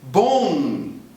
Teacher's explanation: Tá aí um M escrito em posição final, que é claro, não vai ser lido por um brasileiro. A pronúncia normal no Brasil é criar um U que não está escrito e nasalizar esse U.